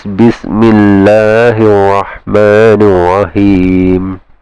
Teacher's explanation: this hamzatul wasl is in the middle of the words. You don't pronounce it.